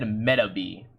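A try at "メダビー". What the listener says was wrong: Metabee? Metabots, and it's not Meta, it's Meda.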